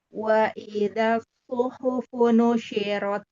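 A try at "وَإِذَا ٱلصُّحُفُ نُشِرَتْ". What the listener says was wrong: Ahsan. Lanjut.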